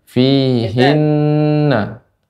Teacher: Kemudian fihinna. Nun yang tasydid itu dibaca juga dipanjangkan gunnahnya